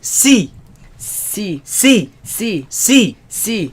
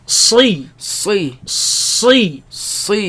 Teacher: Back of the tongue is raised.